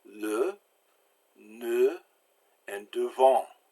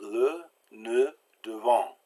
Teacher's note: it's like kind of like the schwa in English, that unaccented generic vowel, except in French, you purse your lips. That means you stick them out and make them real and small.